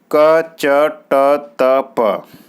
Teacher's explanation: कंठ में क वर्ग आएगा, तालव्य में च वर्ग आएगा, मूर्धन्य में ट वर्ग आएगा, और दंत में त वर्ग आएगा, और ओष्ठ में प वर्ग आएगा